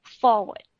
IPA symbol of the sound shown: ə